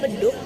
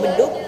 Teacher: fonem bahasa Indonesia G dalam posisi akhir kata yang diucapkan K, oleh penutur bahasa Sunda cenderung akan diucapkan G.